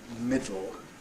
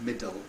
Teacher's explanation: It's noticeable after a T or a D. Okay, if you say middle, that's syllabic L, which is different from middle, putting a schwa in. Although occasionally you'll hear that pronunciation, we like you to say middle.